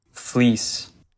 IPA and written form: flis (FLEECE)